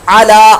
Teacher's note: عین کی آواز کی جگہ حمزہ کی آواز نہیں آنی چاہیے، بلکہ عین کی آواز کو سیکھ لیجیے، درست مخارج سے.